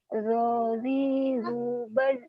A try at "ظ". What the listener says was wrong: Nah, tinggal naikin pangkal lidahnya aja ya, karena itu belum tebal sama sekali.